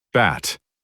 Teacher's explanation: Almost no gap at all. Your voice starts almost instantly.